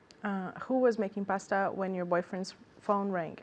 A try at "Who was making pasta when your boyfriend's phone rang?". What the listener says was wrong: Did you hear intonation? Because I didn't hear intonation.